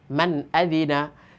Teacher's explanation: মানে আমরা মান বলে ধরে রাখতেছি না, ডাইরেক্ট ছেড়ে দিচ্ছি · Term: ইজহার